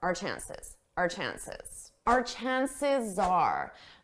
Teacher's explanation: chances at a natural pace we don't pronounce it our chances we just do a very soft unstressed are